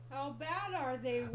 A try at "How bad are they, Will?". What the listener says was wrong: Okay, you gotta emphasize that R. Okay, how bad are they, Will?